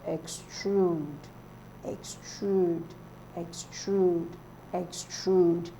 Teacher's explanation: Extrude is stressed on the second syllable. So others are stressed on the first syllable, while extrude is stressed on the second.